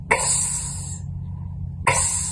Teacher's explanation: The sound for X is two voiceless sounds. K, S. So the sound for X is Ks, Ks.